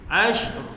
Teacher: Kena matikan shin dulu tanpa qalqalah baru r sikit.